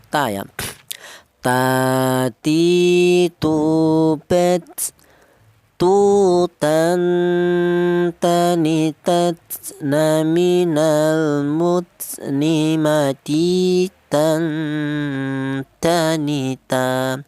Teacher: keluarnya huruf berasal dari ujung lidah menyentuh pangkal gigi seri atas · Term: huruf ta